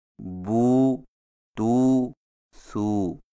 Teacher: उल्टी पेश को होंठों को गोल करके थोड़ा सा खींचकर पढ़ा जाता है, जैसे बू, तू, सू।